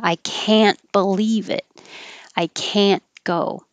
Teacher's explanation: the negative word will be stretched and you'll hear the vowel ah · But you won't hear the T, so it'll just sound like the positive can. However, the positive can sounds like kin.